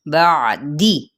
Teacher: با سختی سے ذرا ادا کریں گے لیکن عین کو وسط حلق سے